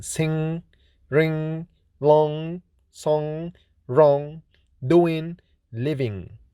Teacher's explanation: Ng or ny is voiced velar nasal consonant